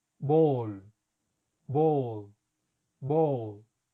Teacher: Es hacer lo mismo que hacemos con una O del español, pero abriendo más la boca, dejando los labios redondeados. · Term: O larga